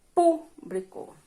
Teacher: proparoxítona a sílaba tônica é a antepenúltima